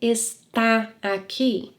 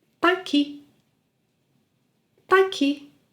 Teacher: Drop the es and say tá aqui and link it.